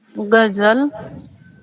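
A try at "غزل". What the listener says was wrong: नहीं गजल फिर से बोलिए, गईन के साथ गजल।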